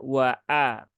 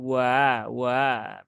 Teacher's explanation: Harus ditahkikkan ya diperjelas suara hamzahnya wa a bukan wa wa begitu nah ini juga termasuk sesuatu